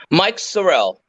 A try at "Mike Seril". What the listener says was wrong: Seril. You said Seril, like with an A.